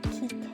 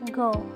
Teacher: a constriction between the body of the tongue and the velum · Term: velar consonant